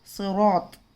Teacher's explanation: यहाँ पे रा भी मोटा पढ़ा जाएगा क्योंकि रा पे ज़बर है। सिरात। वतवासौ नहीं।